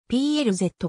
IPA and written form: 'plæzə (プラザ)